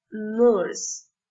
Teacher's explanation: The next sound is Its place of articulation alveolar. The tip of the tongue touches the crust of the teeth and restricts the flow of air, and the vocal cords vibrate a little.